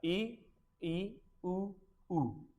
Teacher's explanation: आ इ देखो बहुत कम खुल रहा है। इ उ इनके उच्चारण में मुंह बहुत कम खुलता है।